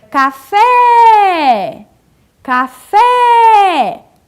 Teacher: essa palavra é uma palavra oxítona, porque a última sílaba era a sílaba tônica